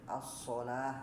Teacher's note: Kalau shod dia di awal ya, as-sholah misalnya ya, dia tebal ya. Kalau dia fathah atau kalau dia juga kasroh, nah maka dia juga tetap tebal ya.